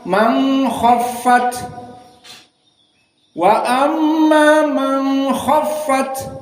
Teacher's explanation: Maka dibaca fahuwa fi, fahuwa fi, dan ini sesuai dengan qiraah Al-Kisai dan As-Susi an Abi Amr. Dan yang ketiga man khaffat, dibaca dalam keadaan ikhfa